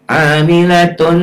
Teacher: Ditahan, ada panjangnya, ya, 1 alif sampai 1 alif setengah, atau 2 sampai 3 ketukan, dan ada dengung ke hidung. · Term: idgham bi gunnah